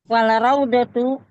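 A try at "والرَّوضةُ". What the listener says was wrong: Waraudah, bukan wal. Waraudatu.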